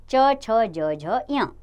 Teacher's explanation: तालु का जीभ के अग्र भाग से स्पर्श, आगे की भाग से स्पर्श होता है, तो इसलिए इसको तालव्य व्यंजन कहते हैं।